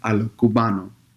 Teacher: Además, hay el fenómeno del debuggalization. Y eso es cuando un hablante no pronuncia el S al fin de la palabra y reemplaza ese sonido con H sin voz. La canción cubano a lo cubano es un buen ejemplo y no muestra la S.